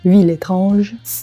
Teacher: «Э» немое не произносится перед гласным звуком. И при этом на стыке слов в данном случае происходит консонантное сцепление, когда произносимый согласный предыдущего слова произносится в начале последующего слова. «Ville étrange».